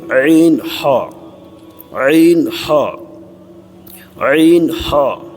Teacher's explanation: دوسرا مخرج وسط حلق، حلق کا درمیانی حصہ، اس سے عین ہا، عین ہا، عین ہا، ٹھیک ہے، ادا ہوتے ہیں۔